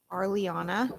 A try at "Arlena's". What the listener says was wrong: But Arlena is the restaurant with the plural, the S.